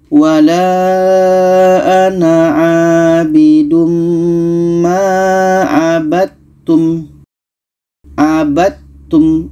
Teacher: Dal ini ada qalqalah, sedangkan ta ini bukan qalqalah sifatnya. Maka dal yang asalnya hukum qalqalah tidak jadi kita masukkan ke ta.